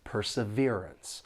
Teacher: this word has four syllables, and the stress is on that third syllable